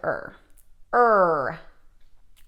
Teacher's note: when you make an er sound you probably make something more of like a bunched r the back of your tongue is going backwards